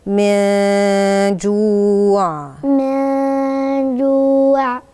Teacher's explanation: النون عندي ساكنة وجاي وراها حرف من حروف الإخفاء، ففي عندي غنة الإخفاء.